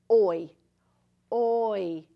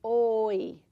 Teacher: we make an O and then we pull it back to an E